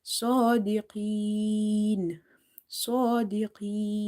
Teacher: Swad is heavy because it's from the musta'aliya letters. So swad vertical fatha.